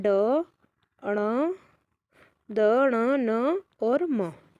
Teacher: जिनका उच्चारण नाक से होता है नासिका कहलाते हैं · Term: नासिका वर्ण